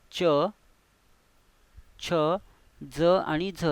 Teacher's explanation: फुगीर भाग आहे आपला त्याला आपण दंत तालव्य म्हणतात म्हणजेच काय दंत व तालू यांच्यामधील जी जागा आहे ती म्हणजे दंत तालव्य